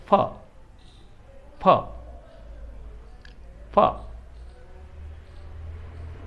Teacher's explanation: लेबियोडेंटल जो है वो दंतोष्ठ ध्वनि जो है वो ये नीचे वाला होठ ऊपर वाले दांतों को लगता है।